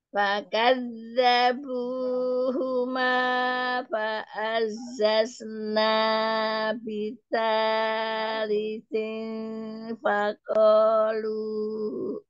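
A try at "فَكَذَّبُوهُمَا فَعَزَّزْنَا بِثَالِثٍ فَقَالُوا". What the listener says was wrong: Eyang, jangan apa namanya mat-matnya itu matnya itu masih nggak sama, ada yang panjang, ada yang apa namanya pendek. Terus huruf kof itu jangan menyerupai k, jangan fakoh fakoh itu makhrajnya kaf. Iya, Masya Allah, fakoh.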